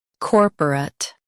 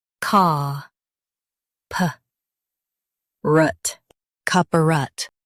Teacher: In US, stress cor. In UK, stress caw. Keep puh-rut soft.